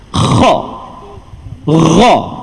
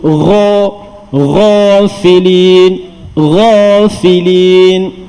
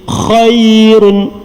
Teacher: dua huruf yang duduk bahagian halqum, tapi bahagian paling atas iaitu dua huruf tu kha dan juga ghain. Nampak tak persamaan kedua-dua huruf tu dia ada bunyi berkeladak sikit.